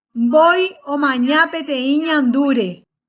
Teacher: esta palabra y cada tono se realiza sobre una sílaba distinta alto sobre la primera sílaba el bajo sobre la segunda sílaba y nuevamente el alto estrellita digamos que es el que se asocia con la tercera sílaba la tónica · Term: tono alto